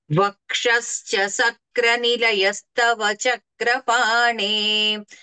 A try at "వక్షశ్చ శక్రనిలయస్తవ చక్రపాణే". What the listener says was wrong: అంటే వక్షశ్చ సక్ర అన్నట్లుగా వినపడుతోంది, సక్ర కాకుండా శక్ర, తాళవ్య శకారము. వక్షశ్చ శక్ర నిలయస్తవ, అలా చెప్పండి.